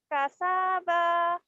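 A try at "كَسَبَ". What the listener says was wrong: salah kasaba jadi harus hati-hati panjang pendeknya ya karena kau sekarang udah pintar baca cuman panjang pendeknya harus hati-hati karena salah panjang salah arti nanti ya boleh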